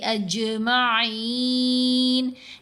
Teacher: جیم ساکن ہے، جیم کے اوپر ہم نے قلقلہ ادا کرنا ہے.